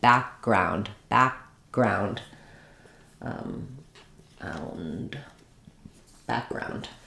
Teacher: So rather than background, that would break up the word, I'm going to say back, lift up for that K, and then just release into the G.